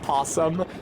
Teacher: the unstressed first syllable just gets truncated